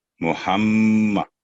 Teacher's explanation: میم پر جب تشدید ہوگی تو 2 سیکنڈ کا اس پہ گننا ہوگا